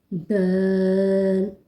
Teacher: زبان کی نوک سے جب ثنایا علیہ یعنی اوپر والے سامنے کے دانتوں کی جڑ سے لگے تو دال ادا کیا جاتا ہے